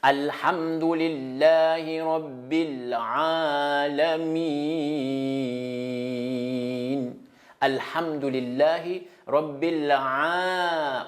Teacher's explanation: On prolonge le lettre Ayn. Et à la fin aussi, le lettre Mim, il faut prolonger parce que après lettre Mim, c'est Huruf, Harf Maddi. C'est lettre spéciale pour les prolongations. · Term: Huruf Maddi